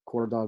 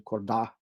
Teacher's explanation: So in Remo, even loan words that are initially stressed get second syllable stress. So korda going to korda.